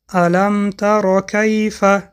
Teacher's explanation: بعد از حرف میم ساکن حرف ت آمد که حرف اظهار شفوی است میم را روشن می‌خوانیم